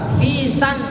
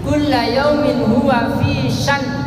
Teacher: Hamzahnya mati, nunnya mati juga karena waqaf, karena berhenti.